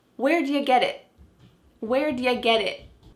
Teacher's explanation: That final T is not really pronounced. Your tongue is going to be in the same place as if you're going to make a T sound, but instead of letting that air flow out, your tongue just stops on the top of your mouth. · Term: stopped T